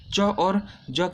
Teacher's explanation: च वर्ग आपका तालव्य वर्गीय व्यंजन, तालु से इसकी उत्पत्ति होती है